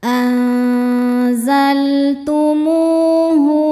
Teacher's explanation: Cara membacanya huruf mim dipanjangkan dua harakat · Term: mad thobi'i zohiri